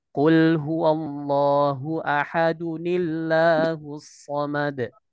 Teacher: pertemuan sukun dengan sukun, kaidahnya, maka sukun pertama harus diharokati kasroh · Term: nun sakinah zaidah